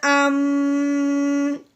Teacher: حمزہ میم زبر ام، ہاں جی جو میں نے ام کیا ہے نا یہ ہم نے غنہ کیا ہے، منہ بند کر کے ناک میں سے آواز نکالی ہے۔ غنے کی جو لمبائی ہوتی ہے وہ 1 الف کے برابر ہوتی ہے، ٹھیک ہے۔